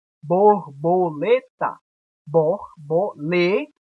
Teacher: a sílaba tônica é a penúltima posição paroxítona exemplo borboleta borbolet a sílaba mais forte a sílaba tônica tá